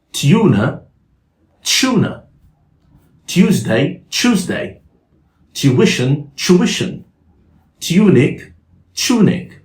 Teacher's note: Some British people will pronounce it as tune with a sh sound instead of y. So the y sound became a sh sound.